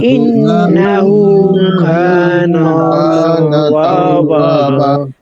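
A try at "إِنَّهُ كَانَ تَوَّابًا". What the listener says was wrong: আচ্ছা নুনে টান দিতেছেন একজন না কানা না টান দেওয়া যাবে না ইন্নাহু কানা না নাতে টান নাই কাতে টান আছে নাতে টান নাই ইন্নাহু কানা তাওয়াবা কাফ টান হবে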